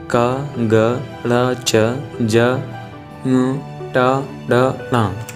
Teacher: जिन व्यंजनों के उच्चारण में मुख से कम हवा बाहर निकले उन्हें हम अल्पप्राण कहते हैं।